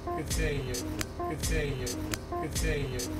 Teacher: the words good and seeing are stressed more than you? The word seeing is stressed on the C, and the ing is quickly rushed through.